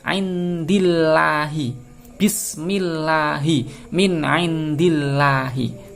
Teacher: Jadi membacanya harus meringis. Ya, tidak boleh dibaca tebal. · Kenapa ada lafal Allah didahului oleh harokat kasrah, maka dihukumi tarqiq, tipis.